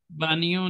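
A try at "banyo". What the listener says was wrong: बानियों, बाइयों। नून, वो ने जो है, ने की आवाज कम आएगी। नून गुन्ना ओके, बाइयों, बाइयों।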